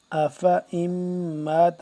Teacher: افا ام مات لمبا نہیں کریں گے، یعنی کہ اس کو حمزہ زبر فا زبر فا پڑھیں گے